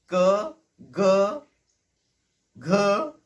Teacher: छाती से जब हवा बाहर आती है और वो हमारे बैक ऑफ द टंग और सॉफ्ट पैेट की वजह से रुकती है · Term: वेलरिक